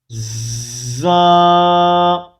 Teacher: زبان کی نوک کو سامنے والے نیچے کے دو دانتوں کے کناروں سے مضبوطی سے لگا کر باریک اور سیٹی جیسی آواز میں دانتوں کو سختی سے ملائے بغیر پڑھیں گے